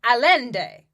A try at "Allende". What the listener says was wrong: Allende. You don't say the L's.